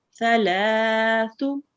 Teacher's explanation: Make sure to read the tha here with touching your tongue with your upper teeth.